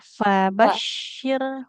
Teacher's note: bibir bawah menempel ke ujung gigi seri yang atas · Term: huruf fa